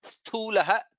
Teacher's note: Then in the second word Sthulah Tha is Mahaprana.